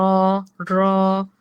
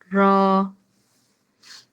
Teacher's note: জিহ্বার আগার উল্টা পিঠ তার বরাবর উপরের তালুর সঙ্গে লাগাইয়া উচ্চারিত হয় র